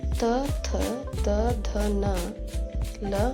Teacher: ದಂತ್ಯ ವರ್ಣಗಳು ಅಂದ್ರೆ ಹಲ್ಲುಗಳ ಸಹಾಯದಿಂದ ಹುಟ್ಟುವಂತಹ ಅಕ್ಷರಗಳು